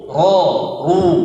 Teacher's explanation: Ro tebal. Ro yang berharokat fathah dan dhammah itu dibaca tebal seperti o.